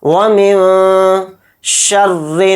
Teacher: تو دیکھیے یہاں پر نون ساکن کے بعد شین آ گیا، تو اس میں بھی اخفا کا قاعدہ ہو رہا ہے، نون کی آواز کو ناک میں چھپا کر پڑھیں گے، اخفا کریں گے۔